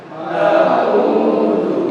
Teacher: kalau ain di tenggorokan bagian tengah